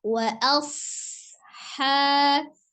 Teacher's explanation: Ketika dia sukun, huruf shad itu memiliki sifat desis ya atau as-shafir. Maka jangan dijedah wa asha tapi alirkan wa asha. Kemudian hanya 2 harokat.